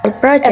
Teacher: So, the word stress is on the first syllable.